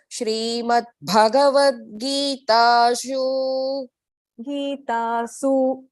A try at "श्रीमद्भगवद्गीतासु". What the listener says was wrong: Su is not dirgham. So we are splitting there. Bhagavad-gītāsu. So when you join that su and Upanishatsu, it becomes su dirgham. But then we are stopping there, so it has to be the short hrasva su.